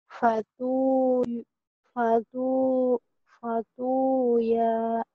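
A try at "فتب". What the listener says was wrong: Bukan fatu ya, titiknya satu. Fatu ba. Ba ya. Rumahnya rumah iya, tapi titiknya satu. Fatu ba, banyak yang kecil. Emang ada ianya itu ya. Tapi yang titik-titik ba.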